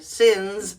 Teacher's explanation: So the plural, sins, we make this Z sound there.